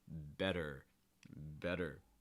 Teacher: note that you're holding that R sound, better, make sure that R sound is strong enough at the end.